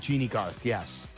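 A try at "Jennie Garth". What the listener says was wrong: Jenny, not Jeannie. Not Jeannie Buss, Jenny Garth.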